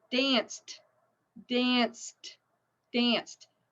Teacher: right it's unvoiced so with the Ed pronunciation it's actually a since it's unvoiced it's a t sound